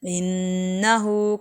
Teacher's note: انہو پہ الٹا پیش ہے، اس لیے تھوڑا سا لمبا کیا جائے گا